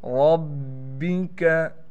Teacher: बा पर तशदीद होने की वजह से ठहराव भी करेंगे